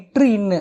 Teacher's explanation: மேல்வாய் நாக்கின் நுனி மிகவும் பொருந்துவதால் பிறக்கின்றன